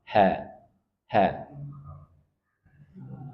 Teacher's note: huruf ha sama dengan Hamzah dia dari pangkal tenggorokan ha ha ingat ya jangan sampai keluar dari dada ha berat